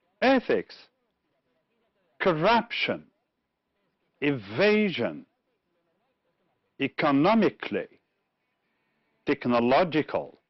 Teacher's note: in ethics it's the first syllable in corruption it's the second one in evasion it's the second one again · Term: stressed syllables